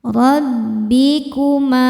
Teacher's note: Rabbikuma, ma mad tabi'i dhahiri karena ada alif didahului fathah, maka huruf mimnya panjang 2 harokat.